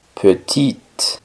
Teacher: femenina de esta palabra se le agrega una e sería petit la e del final no suena sino que ahora suena es la t petit ya que por lo general cuando va una e al